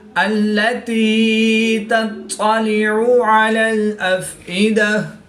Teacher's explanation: تا اور طا حروف صوت یعنی ملتی جلتی آواز والے حروف میں سے ہیں، تا کو باریک پڑھیں گے، اور طا حروف مستعلیہ میں سے ہے تو اس کو پوری یعنی موٹا پڑھیں گے۔ طا حروف قلقلہ میں سے بھی ہے اور یہ مشدد ہے تو یہاں پر قلقلہ خوب جماؤ کے ساتھ کریں گے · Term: قلقلہ کبریٰ